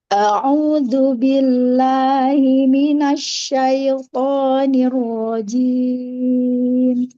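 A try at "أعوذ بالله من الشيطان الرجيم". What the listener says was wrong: E rahangnya bagian bawah itu kurang turun.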